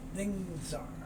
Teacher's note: The S moves over, becomes a Z sound.